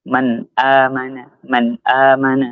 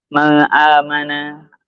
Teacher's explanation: Itu jelas dalam pengucapan nunnya. Nunnya nggak ada perubahan sama sekali. Nggak boleh didengungkan. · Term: idhar